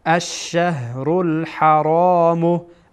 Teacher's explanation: ها هم که میدانید از انتهای حلق ادا میشه.